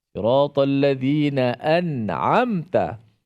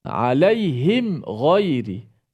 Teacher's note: izhar syafawi ni bacaan dia tidak dengung. Tidak boleh memanjangkan dengung itu.